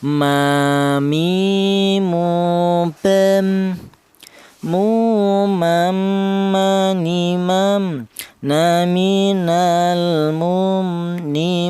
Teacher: Huruf mim ini keluarnya berasal dari kedua bibir yang rapat ya.